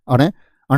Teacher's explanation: ण ण बोलेंगे तो नाक पर प्रभाव जाएगा